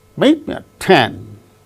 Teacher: so only two words me and 10 these two gain stress